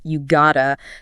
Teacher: The word have just vanishes completely, and the word to gets reduced to a really soft sound, often just a schwa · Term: reduction